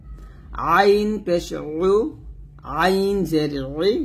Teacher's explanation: আইনের উচ্চারণটা আমরা হলকের মাঝখান থেকে চাপ দিয়ে বলি